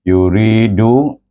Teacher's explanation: Baik, perhatikan kalimah yuridu 1, 2, 3 kalimah iaitu suku kata kedua itu dibaca dengan mad asli. Yang lain satu-satu. 1, 2, 1. Yuridu.